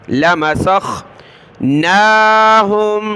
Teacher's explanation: लाम को खींचना नहीं है, ला नहीं पढ़ना